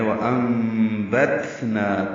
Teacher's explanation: نون ساکن کے بعد با آنے کی وجہ سے اقلاب ہو رہا ہے، نون کی جگہ میم پڑھیں گے، یعنی بدل دیا گیا ہے۔